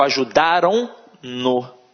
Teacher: Então, o próprio na, ele é nasalizado. O som também sai pela narina.